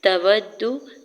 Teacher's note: تا کے زبر کو جلدی سے ادا کریں گے، واو کے زبر کو دال مشدد کے ساتھ ملاتے ہوئے پڑھنا ہے، واو کی دال کی پیش کو کھینچنا نہیں ہے۔